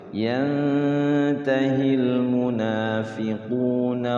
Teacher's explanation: Nun sukun ketemu ta tuh. Walaillam yan ikhfa. Ditahan dulu, diikhfakan dulu.